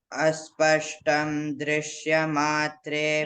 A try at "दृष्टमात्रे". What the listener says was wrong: Drishya no. Drishta. When I chant, you have to pay attention. Drishta.